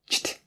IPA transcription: tʃt